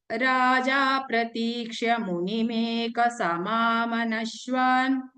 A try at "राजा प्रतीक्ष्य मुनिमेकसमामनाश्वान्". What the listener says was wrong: Nashwan, no? Na is also Dirgha.